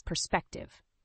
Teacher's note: the word perspective has three syllables with the stress on the second syllable